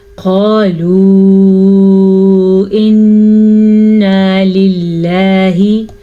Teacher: مد آپ نے لمبی کرنی ہے اور غنہ نون کا ادا کرنا ہے، اللہ کے نام کو باریک پڑھنا ہے کیونکہ لفظ اللہ سے پیچھے زیر ہے.